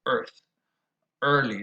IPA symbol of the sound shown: ɝ